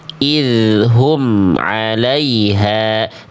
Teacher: Tidak ada bunyi me di ujung pelafalan am. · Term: izhar syafawi